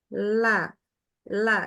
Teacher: lidah ujung lidahnya itu kena dengan langit-langit bagian depan la la jadi langit-langitnya bagian depan jangan di tengah ya tapi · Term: huruf lam